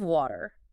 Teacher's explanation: There's a strong R sound involving curling your tongue.